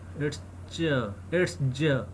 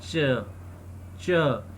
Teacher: The jaw is voiced and chaw is aspirated.